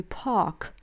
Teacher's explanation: «р» не слышим, получается просто длинное «а» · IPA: [ɑː]